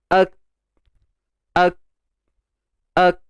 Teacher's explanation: Kita matikan huruf kaf. Dan apa yang berlaku, pangkal lidah akan naik ke lelangit lembut. Lelangit berdaging di belakang tu. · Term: makhraj bagi huruf kaf